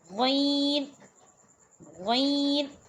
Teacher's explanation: حلق کے اوپر والے حصے سے غین ادا ہوتا ہے۔ اس میں آپ کو فنگر رکھنے کی ضرورت نہیں ہے، یہ بہت سمپل ہے، پر آپ کو اس چیز کا یہ خیال رکھنا ہے کہ یہ اقصی حلق سے ادا ہوگا، حلق کے سب سے اوپر والے حصے سے ادا ہوگا۔